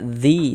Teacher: Jadi kalau di sini ada ada huruf ya sukun sebelumnya di sini ada harakat kasrah, maka huruf yang memiliki harakat kasrahnya dibaca panjang sehingganya dzi dibaca panjang. Mad thobbi'i panjangnya dua harakat sesuai dengan rumus satu warna hitam.